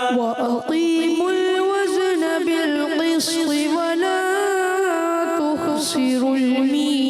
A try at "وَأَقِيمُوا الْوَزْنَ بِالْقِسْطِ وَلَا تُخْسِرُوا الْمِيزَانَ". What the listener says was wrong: جی آپ سے بھی تھوڑی سی غلطی ہو گئی. وَأَقِيمُوا الْوَزْنَ نہیں کریں گے، وزن زام قلقلہ ہو جائے گا. وَأَقِيمُوا الْوَزْنَ بِالْقِسْطِ وَلَا تُخْسِرُوا الْمِيزَانَ.